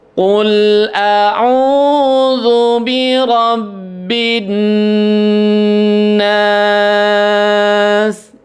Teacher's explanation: ada birabbin Nas nunnya ada tasdid maka di situ harus ditahan ditahannya Berapa lama ditahannya tiga ketukan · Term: gunnah